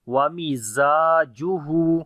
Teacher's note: Za we read bit hard and also we long there is alif madda and this alif we read in light sound and we long Wamizajuhu.